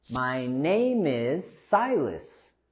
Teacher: Here we can use our linking as well between name is